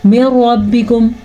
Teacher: را کو پور پڑھیں گے را پہ زبر ہونے کی وجہ سے · ہم نے یہاں پہ ملایا تو ہے لیکن غنہ نہیں کیا، غنہ بنتا ہی نہیں ہے.